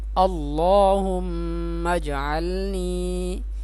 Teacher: اس اللہ کے نام کو پر کر کے پڑھیں گے یعنی موٹا کر کے پڑھیں گے